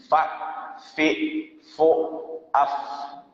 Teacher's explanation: Di antara sifat huruf fa tadi adalah hamas atau bahasa kampung tuh mahmus, berhembus, berdesir jamurnya atau tambahan. Jadi membacanya fa itu entah hidup, berbaris atau mati tetap berangin.